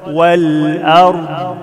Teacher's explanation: لما نقف على الضاد ما عملش فيها قلقلة